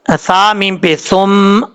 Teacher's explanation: ثم سا بغیر سیٹی کے ساتھ پڑھا جائے. سا کا مخرج ہے زبان کا سیدھا اوپر والے دانتوں کے اندرونی کنارے سے لگے تو سا پڑھا جاتا ہے, بغیر سیٹی کے ساتھ پڑھا جائے گا.